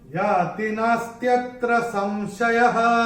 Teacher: विसर्ग चरण की समाप्ति पे जो आ रहा है चौथे चरण की, उसका उच्चारण केवल और केवल ह ही होगा, क्योंकि चरण की समाप्ति पे आ रहा है।